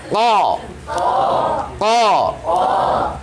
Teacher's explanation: Pangkal lidah, masih lidah tapi dipangkal sekali. Perbatasan anak lidah ataupun amandel. Dia face to face, head to head dengan amandel di sana. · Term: huruf qaf